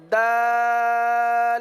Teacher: जबान की नोक और ऊपर के दांतों की जड़ से यह हर्फ अदा होता है।